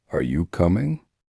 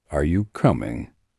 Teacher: with rising intonation at the end. Are you coming? Sounds like a normal question. With flat intonation, are you coming?